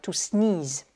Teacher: on est sur deux E, et les deux E, c'est toujours un long I